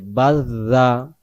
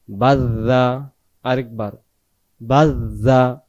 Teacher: যদি আমি এখানে শক্ত করে উচ্চারণটা করি বাজ্জা, জাল অক্ষর আর উচ্চারণ হইল না, আমার জিম অক্ষরের উচ্চারণ চলে গেল